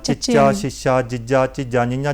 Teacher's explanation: ਜਿਹੜੀ ਸਾਡੀ ਜੀਭ ਹੈ, ਉਹ ਤਾਲੂ ਨਾਲ ਲੱਗਦੀ ਹੈ, ਤਾਲੂ ਦੇ ਨਾਲ ਲੱਗਦੀ ਹੈ, ਤਾਲੂ ਨਾਲ ਲੱਗਦੀ। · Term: ਤਾਲਵੀ ਧੁਨੀਆਂ